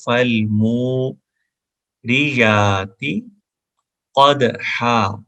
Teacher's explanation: میم کے بعد واو ہے تو فل مو 1 الف کے برابر یعنی 1 سیکنڈ کے برابر تقریباً ہم اس کو لمبا کریں گے